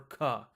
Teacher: if you put your hand in front of your mouth you should feel a big puff of air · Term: aspiration